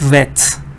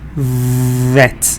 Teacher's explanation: there's no contact almost no contact when you're saying W nothing is touching nothing this is what but when you say the V there's contact